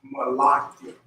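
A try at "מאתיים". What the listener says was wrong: You're still saying la. You're throwing one of these in there. Don't take that up. Don't take that up. So ma'athi.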